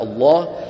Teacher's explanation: ومع مرور الزمن تحولت الى الله وبتفخيم اللام تعظيما